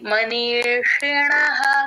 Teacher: కూడా వినిపించేటట్టు చెప్పాలి మనిషిణః ఇక్కడ చూడండి మని నీ కి దీర్ఘం తర్వాత షి ముత్తష కొంచెం టంగ్ ట్విస్ట్ చేసి చెప్తాం అణ అప్పర్ జా టచ్ చేసి చెప్తాం టంగ్ ని క్లియర్ గా వినిపించాలి